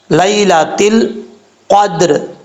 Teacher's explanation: قاف حروف مستعلیہ میں سے ہے، پر پڑھا جائے گا۔ اس کا مخرج ہے 2 نقطوں والے قاف کا، کہ زبان کی جڑ اوپر والے تالو کے نرم حصے سے لگے تو قاف پڑھا جاتا ہے۔